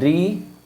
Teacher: री किस में आएगी? मूर्धा में आती है री।